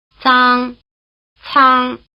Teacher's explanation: unaspirated and aspirated consonants that resemble the TS in cats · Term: dental position